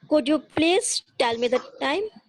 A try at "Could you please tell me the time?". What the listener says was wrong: Okay, तो और थोड़ा राइजिंग करो। हाँ, फॉलिंग टू राइजिंग को और थोड़ा ज्यादा